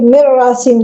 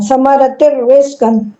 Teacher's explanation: اس میں ادغام ہوتا ہے لیکن غنہ نہیں ہوتا اس میں، لام اور را میں۔ جیسے نون تنوین ہے تن ہے، سمارا تن ہے، بعد میں را آیا، اس کے بعد نون تنوین کے بعد را آیا تو یہاں غنہ نہیں کرنا، سمارت رزقن، انہیں بتایا لام اور را میں غنہ نہیں ہوتا۔